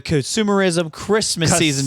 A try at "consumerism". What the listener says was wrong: however you said consumerism, it sounds like you pronounced it with a K.